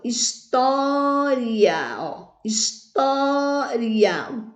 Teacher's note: a sílaba tônica ela cai na penúltima sílaba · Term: paroxítona